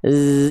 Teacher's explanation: Jadi enggak boleh ada anginnya. Zai hanya desisan suara bukan desisan desisan angin. Desisan suara z.